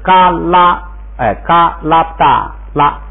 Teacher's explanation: 注意这个读拉不大的时候啊，这个拉已经读成一声了，就不读原声了 ，就是因为它一带帽不就读一声吗？就是嘎拉嘎拉不大拉，就是拉一开始就读一声了。嘎拉不大拉爬拉不大拉牙撒浪爬拉不大拉牙撒浪拉拉不大拉卡拉拉拉不大拉卡拉沙拉不大拉塔勒沙拉不大拉帕勒沙拉不大达沙拉不大达擦耳竖擦擦耳竖擦